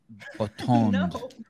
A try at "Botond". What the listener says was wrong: Nothing to button. Nothing close to button. Botond.